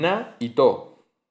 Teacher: Es decir, lo que se pierde no es no es la sílaba final, lo que se ha perdido es la D, es el sonido D. se pierde la D y luego hay una fusión porque te quedan dos A o dos O seguidas y entonces dos sonidos A seguidos y se juntan en uno solo. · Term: síncopas